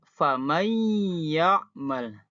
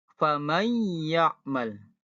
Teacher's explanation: ya yang semulanya hurufnya e bacaannya faman ya'mal jadi famay ya'mal ditahan dulu ya Sambil ada getaran di hidung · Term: dengung